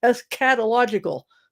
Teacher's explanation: They really lean on the cat syllable